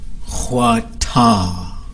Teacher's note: ha ha that's a high tone at the end ha ha that's a low tone at the end